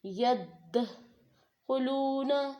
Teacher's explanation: یدخلون، واو سے پہلے کیا ہے، پیش، تو وہ کیا بن گیا، واو مدہ بن گیا، تو اس کو بھی ایک الف کے برابر لمبا کر کے پڑھنا ہے